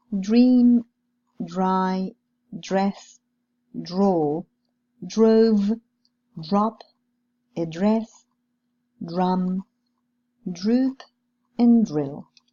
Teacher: Now let's see some examples with a voiced post-alveolar affricate.